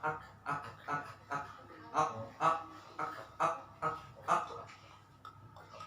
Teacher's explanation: Kalau k agak maju dikit yang diangkat.